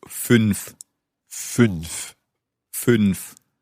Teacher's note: Now, I'm watching you say this in our studio here, and you're moving your whole mouth forward as you say fünf. It's the Ü sound